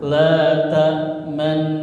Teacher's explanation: bibir mencucu atau monyong di tengah tengah dengung sebagai isyarat bunyi dah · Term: bacaan ismam